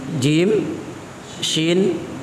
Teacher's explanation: Tengah lidah bertemu dengan Tengah langit-langit mulut bagian atas